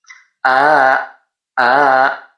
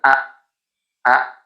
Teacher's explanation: Qolu kemudian ini a alifnya berharakatkan fathah berdiri. Ini adalah mad badal. Jadi dipanjangkan dua harakat.